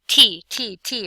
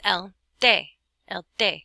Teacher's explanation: your tongue touches the back of your front teeth and there's no puff of air